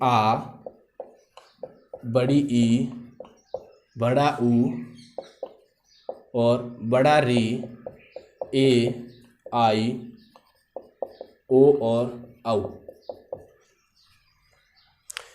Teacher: 2 मात्रा का समय लगता है। दीर्घ स्वर का उच्चारण 2 मात्रा के अंदर किया जाता है।